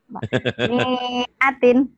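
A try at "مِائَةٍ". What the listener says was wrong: Mana pendek. Pendek. Bandel ya. Mana yang manjanginnya? Panjang dari mana? Itu kan kasroh. Dengan alif kan nggak jodoh. Kalau ini nih jodoh nih. Hashiman. Ini kan nggak jodoh. Kalau ini jodoh nih, patah dengan alif.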